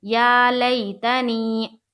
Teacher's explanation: یا مدہ کو ایک الف کے برابر کھینچ کر پڑھیں گے